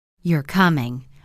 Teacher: falling tone, that sounds like a statement